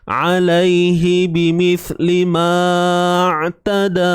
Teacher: Ma tu tak perlu dipanjangkan. Sebab alif mat tu dah tak berfungsi.